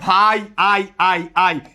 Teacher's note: ভাই শব্দে তুমি কখনো দুইটা স্বরবর্ণ উচ্চারণ করতে পারবা না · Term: যৌগিক স্বরধ্বনি